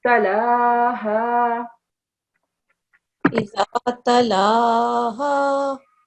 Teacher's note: So lam does not have tashdid, okay? I forgot to mention this. So don't emphasize the lam.